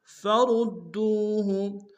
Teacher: را کو موٹا ادا کرتے ہوئے دال کے سامنے لیں گے، دال کو تشدید زور دیں گے، دال کو واو کے سامنے لیں گے، واو مدہ ایک دال میں کھینچیں گے۔